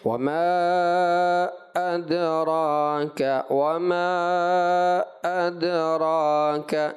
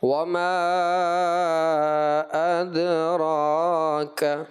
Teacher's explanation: حمزہ کے درمیان میں آپ نے ایسا لگا غیر محسوس انداز والا سکتہ کر دیا، یوں پڑھا آپ نے وَمَا أَدْرَاكَ وَمَا أَدْرَاكَ، جبکہ یہ سیدھا جانا چاہیے تھا وَمَا أَدْرَاكَ، ٹھیک ہے۔